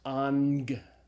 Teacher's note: the first gamma is pronounced as a gamma nasal, as an N sound. So like the Greek word for angel is angelos, alpha, gamma, gamma, but it's pronounced ang, okay, A-N-G sound.